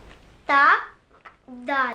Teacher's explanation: दाल और ता, ये एक मखरज है जी। ये जुबान की नोक जो है वो ऊपर वाले दांतों की जड़ के साथ, अंदर वाली जड़ के साथ लगेगी जुबान की नोक, तो वहां से दाल और ता निकलेगा।